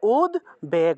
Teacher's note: উদ্বেগ শব্দের ক্ষেত্রে এই বফলাটাকে ওয়া রূপে উচ্চারণ করা হয় না। এই ক্ষেত্রে বটাকে ব হিসেবেই, বফলাটাকে ব হিসেবেই উচ্চারণ করা হয়।